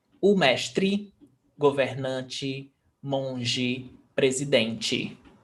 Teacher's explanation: words ending in e, they are pronounced as I.